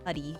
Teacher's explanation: When I'm like faking an American accent, I always just change my T's into D's.